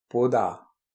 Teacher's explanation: Le da est sonore et se rapproche plus du son de.